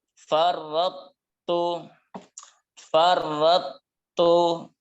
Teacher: idghamnya tidak sempurna karena masih ada sifat dari huruf to, sifat idbaq ya yang tertinggal. Ya, jadi tidak dibaca langsung ke huruf ta-nya. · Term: idgham nakis